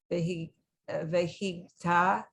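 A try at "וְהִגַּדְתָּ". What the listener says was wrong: okay, so that word is vihigadita, because that shva is sounded, vihigadita.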